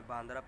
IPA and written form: bæːɳɖɾa (बांद्रा)